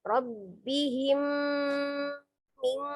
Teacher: huruf mim dengan huruf mim ya mim sukun dengan huruf mim maka diidghamkan langsung di tasdidkan ke mim yang kedua tapi disertai dengan gunnah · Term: idgham mimi